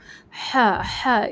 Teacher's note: بڑی ہا درمیانی حلق سے پڑھی جاتی ہے، ہا اس طرح سے، تو تھوڑا سا فورس ڈال کر حلق پر لائٹ فورس ڈال کر پڑھیے۔